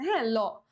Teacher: ফুসফুস থেকে যে বাতাসটা আসে এটা জীভের দুই সাইড দিয়ে বের হবে। ল উচ্চারণ করে দেখ জীভের দুই সাইড দিয়ে হচ্ছে একটা গ্যাপ পাওয়া যাইতেছে। · জীভের ডগা দন্তমূলকে স্পর্শ করে এবং ফুসফুস থেকে আসা বাতাস জীভের দুই পাশ দিয়ে বেরিয়ে যায়। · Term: পার্ষিক ব্যঞ্জন, পার্শ্বিক